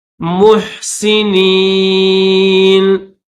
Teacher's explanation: ہا کو نکالتے وقت، ہا کو ادا کرتے وقت گلے سے آواز نکالنی ہے